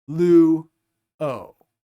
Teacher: the vowels are going to be pronounced separately from one another as separate syllables